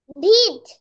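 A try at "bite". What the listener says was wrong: বিট কেমনে হয়? ব ই ঠ বিট, আর ব আই ঠ বিট হয়? ব আই ঠ, ব ইট বিট হয়, ব আই ঠ বিট হবে? ব আইট, বাইট বাইট, ব আই ঠ বাইট, বাইট বাইট,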